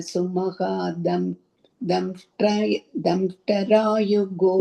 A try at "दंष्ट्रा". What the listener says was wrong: Not damshtara. Damshtra. Damshtara. You are saying the full takara. Don't say it. Damshtra.